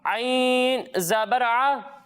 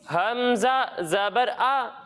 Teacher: جب ہم عین کو پڑھیں گے تو اس کی آواز حلق کے درمیانے حصے سے آئے گی اور جب ہم حمزہ کو پڑھیں گے تو اس کی آواز حلق کے نچلے حصے سے آئے گی